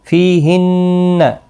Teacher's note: فی یا مدہ ہے، نون مشدد پر غنہ ہوگا۔